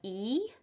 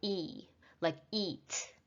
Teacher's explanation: e sound your mouth is not relaxed it cannot be relaxed your tongue is more forward your lips are stretched back like e and your sound therefore is longer